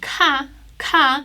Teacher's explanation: much more aspirated and you must expel air when pronouncing this